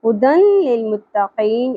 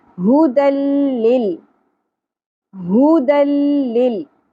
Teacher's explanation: ادغام مطلب جوڑنا ہے، ملانا ہے، لیکن نون ساکن یا تنوین کی جو اینڈ والی نون کی آواز ہے وہ نہیں آنی چاہیے. ہدن اس طرح نہیں پڑھنا، ہدن للمتقین ایسے نہیں پڑھنا. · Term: ادغام بغیر غنہ